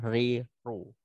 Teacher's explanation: dia bergetar, nah, bergetarnya halus, tidak boleh kasar ya, tidak boleh ri, ru, nah, tidak boleh sampai gitu. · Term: takrir